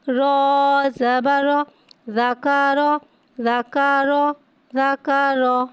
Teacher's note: را پہ زبر ہے, زبر کو منہ کھول کے ادا کر کے پڑھیں گے اور را کو یہاں پہ موٹا ادا کر کے پڑھیں گے. را پہ زبر ہوگا تو لہٰذا ہم را کو موٹا ادا کر کے پڑھا کریں گے.